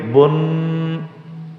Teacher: آپ کو اتنی دیر ناک سے آواز نکالنی ضروری ہے کہ جس میں غننے کی نون کی آواز پیدا ہو